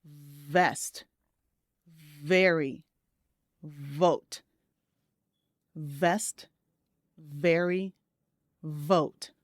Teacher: your bottom lip should be relaxed against your teeth, your upper teeth. Okay? And you should feel that vibration.